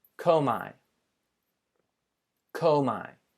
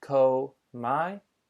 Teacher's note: You'll hear just the 2 syllables, komai, and the accent falls over the omicron, or over the omega